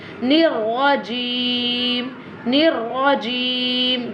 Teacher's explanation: this one ra always pronounced with a thicker voice